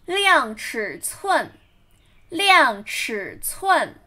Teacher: 量, fourth tone, 尺, third tone, 寸, fourth tone again